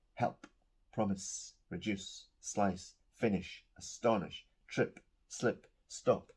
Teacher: the last sound of those verbs is unvoiced